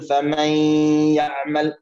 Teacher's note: ف هنا الإدغام بغنة، نقول فمن يعمل، طبعا غنة حركتين ليس ثلاثة وأربعة، لا نقول فمن يعمل أو حركة واحدة فمن يعمل، لا خطأ، إنما حركتين.